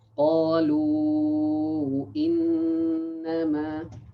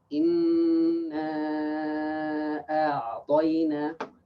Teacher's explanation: mad far'i is more than two harakat